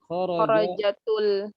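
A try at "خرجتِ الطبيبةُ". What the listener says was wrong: Bukan kharajatu, kharajati. Kan iltiqa'u sakinain. Berarti di kasrah. Kharajatit. Kharajatit tabibatu. Fa'il. Pelakunya kan yang keluar.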